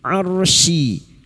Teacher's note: ra sukun yang didoli fathah dibaca tafkim